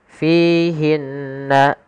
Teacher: alirkan nafas ketika melafalkan huruf fa, karena fa salah satu sifatnya adalah sifat hamas, mengalirnya nafas. Kesalahan yang terjadi menggantinya dengan huruf p, misalkan fihinna.